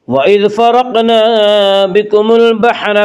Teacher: وَإِذْ فرقنا کی را کو پر پڑھیں گے۔ اس کا قاعدہ یہ ہے کہ را کے اوپر زبر پیش آئے تو را کو پر پڑھا جائے گا، را کے نیچے زیر آئے تو را کو باریک پڑھا جائے گا، یا را کے اوپر زبر اس سے را کو پر پڑھیں گے۔